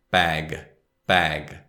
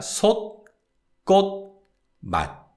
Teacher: you don't release the sound of the consonant, it just stops. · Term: unreleased 디귿 sound